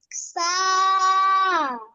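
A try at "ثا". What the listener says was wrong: সা অল্প টান, হ্যাঁ, সায়ে এক আলিফ টান দিতে হবে। সা, সা, তা অল্প টান, এই দুটো, হ্যাঁ। বা, এগুলো তো বেশি টেনে ফেলছো তুমি, এগুলো এক আলিফ টান।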